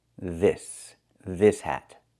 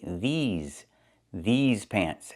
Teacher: If I say this with the short I sound like this is it's for one thing example this hat and the s is a true s no voice this this hat but if I talk about pants I have to say these these pants and I use a long e like green beans plus the zz sound like in zebra with a voice vibration z these these pants pants.